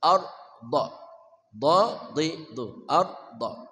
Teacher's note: Tuthirul arda, da-nya tebal tafkhim, du, keluar dari pinggir lidah bersama gigi geraham atas